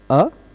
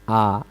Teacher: अ बोलने में कम मुह खुलता है आ बोलने में थोड़ा सा ज्यादा खुल जाता है है ना यद्यपि इन दोनों का उच्चारण स्थान एकक है कंठ